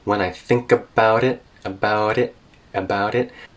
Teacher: so she's tapping her T's there · And the T in it is a glottal stop.